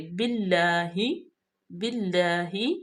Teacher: لام پہ کھڑی زبر ہے، اس کو ہم تھوڑا سا لمبا کریں گے